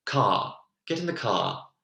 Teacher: And this R is very pronounced. Again, if we're thinking more of an English accent, we'd hear car, get in the car. And the R is sort of left alone. But very rhotic, the R is really present in this North American sound.